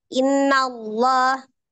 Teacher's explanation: bertemu dengan laf jalala alif lam yang melekat pada lafaz Allah karena sebelumnya di huruf nun itu berharakat fathah maka alif lam jalalanya dibaca dengan tebal innallah lanya dibaca Mad dua harakat kemudian ba banya juga Madi